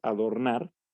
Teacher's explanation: Y esto lo sabemos porque al decir adornar, la que pronunciamos con una mayor intensidad a la hora de decir la palabra es nar, es decir, la última sílaba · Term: sílaba tónica